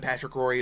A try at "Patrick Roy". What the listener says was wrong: Pronounce the name properly. Not Roy.